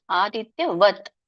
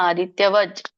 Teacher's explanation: ಸೋ ಇಲ್ಲಿ ಅದು ವತ್ ಇದ್ದಿದ್ದು ವಜ್ ಆಗಿ ಮಾರ್ಪಾಡುತ್ತೆ ಹಾಗಾಗಿ ಇಲ್ಲಿ ವಜ್ಞಾನಂ ಅಂತ ಹೇಳ್ತೇಶಾಮ ಆದಿತ್ಯವಜ್ ಅಂತ ಹೇಳಿ ಹೇಳ್ತಾರೆ ಯಾಕೆಂದ್ರೆ ಜ್ಞ